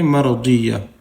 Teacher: تا دو جورتن کو وقفہ کرتے وقت رکتے وقت ساکن کر کے پڑھیں گے. تا دو جورتن کو ہٹا کر ہا ساکن کر کے پڑھیں گے